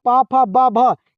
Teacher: तो याद रखिएगा प फ ब भ यह सारे क्या से बोले जाते हैं बाबू? तो ओष्ठ से बोले जाते हैं।